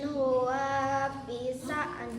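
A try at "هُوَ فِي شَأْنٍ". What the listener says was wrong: Wa-nya pendek.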